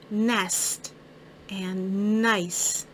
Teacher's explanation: I can hear the n sound, and my tongue is behind my top teeth. Hear that sound at the beginning of words like nest and nice.